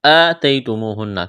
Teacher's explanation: یا ساکن سے پہلے زبر ہے، یا لین ہے، بغیر کھینچ کے پڑھیں گے